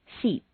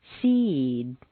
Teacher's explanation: And in Standard American, "No." When you have a word ending in an unvoiced consonant, one that you whisper, t k s sh f sh, you'll notice that the preceding vowel is said quite quickly and on a single stair step. When a word ends in a vowel or a voiced consonant, one that you say, b d g v z j, the preceding vowel is said more slowly and on a double stair step.